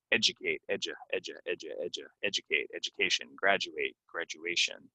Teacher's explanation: this D is gonna sound like a j